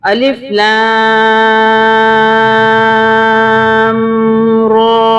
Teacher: یہاں بھی الف کو پڑھیں گے سمپل، لام پہ ہم مدہ کریں گے اور را پہ کھڑی زبر ہے، تھوڑا کھینچیں گے، سب سے زیادہ لام پہ کھینچیں گے